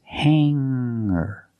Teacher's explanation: remember hanger does not have a hard G sound it's not hangar it's hanger make the sound in your nose